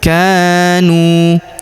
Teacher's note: huruf ka kita panjangkan 2 harokat karena terdapat alif di depannya